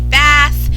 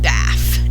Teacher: a child produces the F sound in place of the th sound so again the target word would be bath and the child